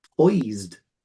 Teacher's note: it's an S, isn't it? But it sounds like a Z, z, z, z, z, z.